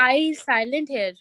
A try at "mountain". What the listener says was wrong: No, it's not silent. So tin. The sound is a soft sound.